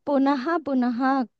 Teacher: విసర్గ తర్వాత ప వస్తే ఫ రావాలి